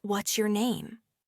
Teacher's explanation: The pitch drops as you ask, indicating a direct question seeking information. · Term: falling intonation